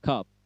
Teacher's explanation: A mingkem maksudnya A tapi tidak terbuka mulutnya ya